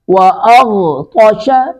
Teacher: غین اور طا دونوں کو پر کر کے پڑھیں گے